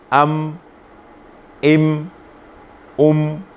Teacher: میم دونوں ہونٹوں کے خشکی والے حصے سے ادا ہوتا ہے، دونوں ہونٹوں کے خشکی والے۔ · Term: میم کا مخرج